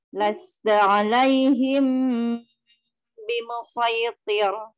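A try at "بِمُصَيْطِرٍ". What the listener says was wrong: Iya, balik lagi jadi tebal. Nanti latihan lagi ya.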